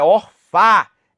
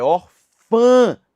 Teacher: a pronúncia que é nasalizada não é orfa é Orfã